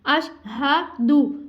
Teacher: अश हा की अदायगी हमने सही करनी है, हल्क के नीचे वाले हिस्से से सीने से अदा करनी है। अशहदु, दाल के ऊपर हरकत है, हम किसी को नहीं खींचेंगे, नहीं अशहदु, यहाँ पे हमने किसी को नहीं खींचना, जस्ट हा की हमने अदायगी दुरुस्त अदायगी करनी है।